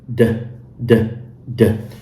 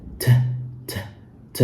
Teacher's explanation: The d also is a voice sound, which means that the vocal cords vibrate when you say it. And if you want to feel this, you can compare it to the sound t.